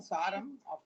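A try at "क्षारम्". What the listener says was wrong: Not Sar. Ksharam. Ksharam. Kshakara. Not Saram. Saram is essence. Sakara is essence.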